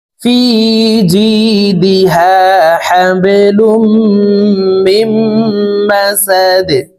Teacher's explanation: হাবে, লাম মিম দুই পেশ লুম, হাবেলুম, মিম মিম জের মিম, মিম জবর বা, মিম মা, সিন জবর সা, দাল দুই জের দিন, দালকে ওয়াকফের ক্ষেত্রে সাকিন করে ফেলবো। দাল কলকলার হরফ, তাই নিচের দিকে ধাবিত করে ধাক্কা দিয়ে সাকিন করব।